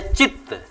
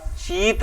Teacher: ह्रस्व ई है जो बदल करके दीर्घ ई में हो जा रहा है और चित्त का चीत बन जा रहा है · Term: दीर्घीकरण